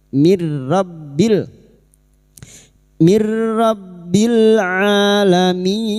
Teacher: Rasulum mir rabbil, mir nun sukun bertemu ro idgham bila guna, nun sukun atau tanwin yang bertemu dengan huruf lam dan ro maka masuk tanpa mendengung, masuk pada huruf ro tanpa mendengung, tanpa ditahan lama-lama.